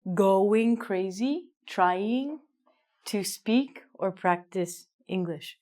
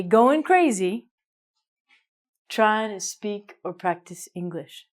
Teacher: Usually in English, we never say: going or trying. We say: goin'. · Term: missing the g